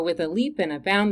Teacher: Leap, bound, and throng. Those are all strongly accented. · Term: anapaes